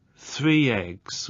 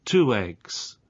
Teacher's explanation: three eggs where you have a linking Y sound and two eggs where you have a linking W sound because you get the linking Y sound with words ending with